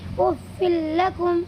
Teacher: یہاں پر بھی دو زیر کی تنوین کے بعد یہ لام آیا ہوا ہے، اسی لیے اس میں بھی ادغام تام ہوگا اور اس سے تنوین کی آواز کو لام میں بدل کر بغیر کسی غننے کے پڑھیں گے، افل لکم۔ میم نون لام زیر مل، لام زبر غلا مل، با زبر با مل با، نون دو زیر نن مل بنن۔